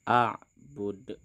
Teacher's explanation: ini di akhir kalimat maka huruf Dal di belakang harus kita matikan sehingga terbentuklah hukum Qalqalah